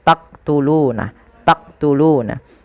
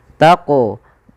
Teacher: Jadi ketika melafalkan huruf qaf itu ketika sukun dipantulkan. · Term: qalqalah